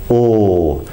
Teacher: we're making that sound by bringing the back of the tongue up against the back of the mouth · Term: dark l